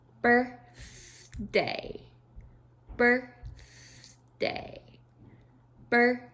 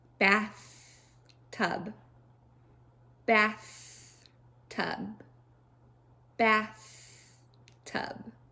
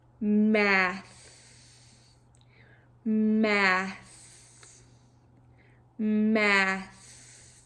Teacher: we gently bite down on our tongue to create that tongue sandwich and we push all the air through the middle of our mouth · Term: th sound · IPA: /th/